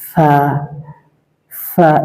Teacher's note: এই হরফটা একালিপ টান হবে এবং এটা উচ্চারিত হবে জিহ্বার আগা সামনের উপরের দুই দাঁতের আগার সঙ্গে লাগিয়ে